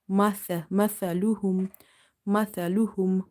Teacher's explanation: Little bit tongue should be out, and its tip will be touching the inner edges of your top two front teeth.